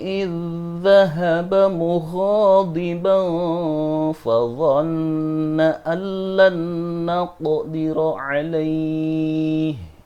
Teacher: Idh di sini dibaca idgham, yaitu memasukkan dha yang pertama atau idh dengan dha yang mati ini dimasukkan ke dha yang hidup